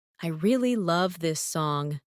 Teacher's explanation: Falling tone for statement.